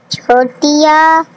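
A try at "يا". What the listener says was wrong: नहीं, या कहना है, छोटी नहीं कहना इसको, कि या कहना है, या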